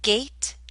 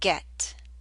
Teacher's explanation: the a in gate is longer